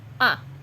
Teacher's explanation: the fourth tone is rated like a little bit pushed.